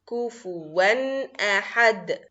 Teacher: For tanween also idhar means clear. So we are going to say the sound of the tanween and the sound of the hamza, both of them clearly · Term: idhar halqi